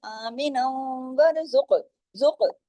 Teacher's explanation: قاف موٹا بھی پڑھا جائے گا، قاف پہ کلکلہ بھی ہوگا کیونکہ قطب جد کے حروف میں سے ہے۔